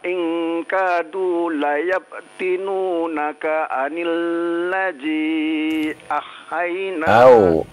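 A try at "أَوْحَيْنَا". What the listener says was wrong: Au. Bukan ah ya. Ulang lagi. Ulang lagi silakan.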